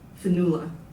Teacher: In Irish your second syllable demands attention.